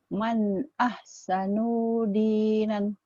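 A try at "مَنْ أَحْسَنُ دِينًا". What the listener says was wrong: Bagus tapi nunya pendek. Man ahsanu ahsanu dinan. Nunya pendek.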